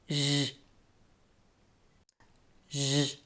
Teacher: Turn on your voice and allow the air to flow with some friction between your raised tongue and the hard palate.